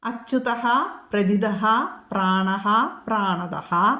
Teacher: അച്യുതഃ കഴിഞ്ഞു വരുന്ന 3 വിസർഗ സന്ധികളിലും ഫ ചൊല്ലണം. കാരണം അറിയാലോ, ഉപധ്മാനീയം വരുന്നു.